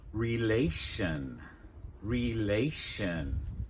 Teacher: Notice there that our stress is on the A that comes before the ending -tion